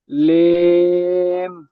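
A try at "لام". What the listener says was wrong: লেম বলবেন না, ওটা লাম বলবেন ভাইজান। হ্যাঁ লেম নয়, ওটা লাম, বুঝতে পেরেছেন? ওটা লাম বলবেন ভাইজান।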